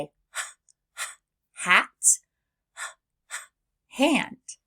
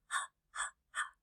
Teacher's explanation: My voice is off and the sound glides right into the next letter.